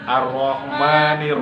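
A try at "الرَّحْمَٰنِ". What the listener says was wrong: Buka dan tutup. Ar-Rahman. Jadi kamu Ar-Rahman, ma doang ma. Ar-Rahman. Nah, kamu tadi Ar-Rahmani, kelamaan. Ar-Rahman. Pas lagi ma-nya. Ar-Rahmanir-Rahim. Tasydidnya kurang kan?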